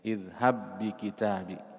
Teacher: Begitu masuk ke ba yang kedua yang berharokat, maka ada tekanan. Iya, ada nabar di situ, ada tekanan karena bertemunya dua huruf yang sama, makhraj dan sifat.